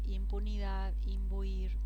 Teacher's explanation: Cómo se transforma en una m delante de oclusivos P B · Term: asimilación